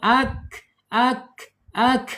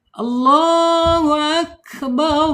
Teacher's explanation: Kemudian secara sifat di sini ada alhams. Alhamsu ya mengalir napasnya ketika kafnya sukun.